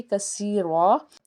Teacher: اس کے بعد ہے کثیرن، آگے وقف ہے تو آگے وقف کرنا چاہیں گے تو ہم دو زبر کو ختم کر کے ایک الف کے برابر کھینچیں گے